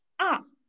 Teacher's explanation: четвертый тон, нисходящий, черточкой вниз изображается, слева направо вниз, и звучит очень быстро и резко